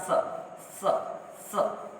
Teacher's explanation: यह जो ध्वनि निकलेगी यह दांत से ध्वनि निकलेगी।